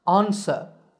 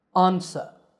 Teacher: in british english it's pronounced ansa with an ah sound at the beginning